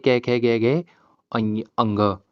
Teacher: अंग में सबसे ज्यादा टाइम लगा ना, वो दीर्घ स्वर से भी ज्यादा टाइम ले रहा है। दीर्घ स्वर बोलने में हम दो वर्डों के मेल से बोल रहे हैं, लेकिन जो हम फिर भी बिना ये, जो हमारा अंग है, ये सबसे ज्यादा टाइम लेगा। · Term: पुलत स्वर